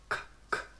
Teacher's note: Block the air, the back of your mouth. No voice.